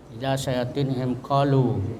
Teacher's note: Ya, mim sukun berketemu ka itu izhar syafawi. Izhar itu jelas mimnya dengan ditutup mulutnya